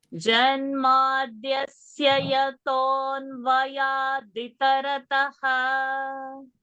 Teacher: It has to be yaton vayadi. Di is short. And it is not vya.